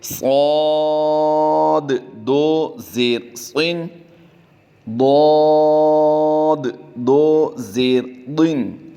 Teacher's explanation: دونوں حروف مستعلیہ سے ہیں، ان کی ادائیگی پر کریں گے